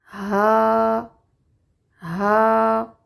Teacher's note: باریک اور نرم حرف ہے، سانس جاری رہتا ہے۔